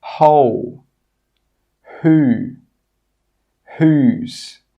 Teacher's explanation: In all of these words, we're pronouncing the H sound but we're not pronouncing the W sound.